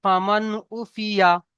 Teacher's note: নুন সাকিনের পরে হুরুফে হালকি 6টি অক্ষরের মধ্যে আইন এসেছে, তাই নুন সাকিনের পড়াকে আওয়াজকে বিনা গুণায় জাহির করে তাড়াতাড়ি পড়তে হবে